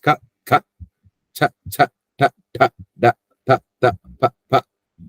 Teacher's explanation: They don't come much from the throat, so they are called as non-voiced, agosha.